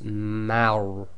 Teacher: the Ma is light and the Ra is tafkhim, full mouth. So you've got to switch from empty mouth to full mouth very quickly.